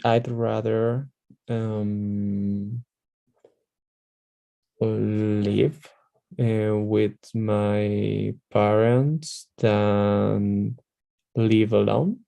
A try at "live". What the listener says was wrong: Just a little detail about pronunciation over there. Instead of e, live, you're going to say more like live, more like a little bit like eh. So it's going to be I'd rather live with my parents than live alone. I'm exaggerating a little bit.